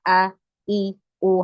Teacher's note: Kita harus paham, dekat dengan dada, bukan keluar dari dada tapi keluar dari ini, dari pangkal tenggorokan, dari area pita suara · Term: hamzah